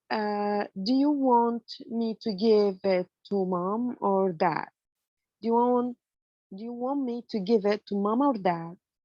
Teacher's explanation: with raising intonation on mom and falling intonation on dad, it's an alternative question.